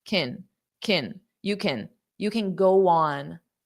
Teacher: So can in this case is an auxiliary verb. So it's just going to sound unstressed.